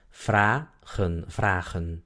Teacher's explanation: la primera sílaba termina en A, por lo tanto la A es larga, es abierta la sílaba.